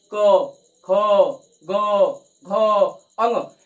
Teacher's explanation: क वर्ग जो होता है वह कंठ से उच्चारित किया जाता है। क वर्ग किससे उच्चारित किया जाता है, तो कंठ से उच्चारित किया जाता है।